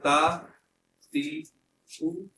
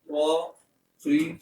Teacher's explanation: اب اگر ہم تا کو باریک پڑھے اور قا کو بھی باریک پڑھتے تو دونوں کی آواز ایک جیسی ہوتی ہے. ان کی آواز میں فرق کیا ہے کہ تا کو باریک پڑھا جائے گا اور قا کو حروف مستعلیہ ہونے کی بنا پر موٹا پڑھا جائے گا